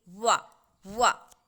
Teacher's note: वा जो है उसका उच्चारण स्थान दांत और ओष्ठ दोनों है। जब आप वा बोलेंगे वा तो दंतोष्ठ, यह दांत और ओठ दोनों के मिलने से जिनका उच्चारण स्थान निर्धारित हुआ है उन्हें दंतोष्ठ कहा जाता है।